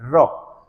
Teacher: रौ तालु से थोड़ा बहुत संपर्क बनाती है, फिर उसके बाद अचानक नीचे गिरती है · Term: लुंठित